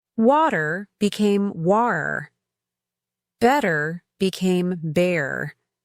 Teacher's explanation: She taught me about the glottle stop, that little catch in the throat that some British speakers used instead of pronouncing a t in the middle of words